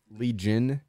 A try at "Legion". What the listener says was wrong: Why are you calling it that? It's pronounced Legion. Like Legion of Doom. Legion of Destroyers. No, it's not Legion. It's not a hard G. It's a soft G. It's Legion, not Legion.